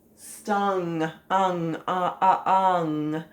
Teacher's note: the NG sound is not really like a G. So you really can't hear it very well.